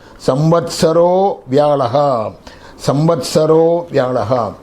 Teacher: That visargam, samvatsaraha, when it is followed by a voiced consonant and unvoiced consonants are there. Now, samvatsaraha plus vyalaha becomes samvatsaro vyalaha